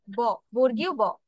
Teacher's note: ওষ্ঠ থেকে। দুটো ঠোঁট একসাথে করে তারপর ব বলছি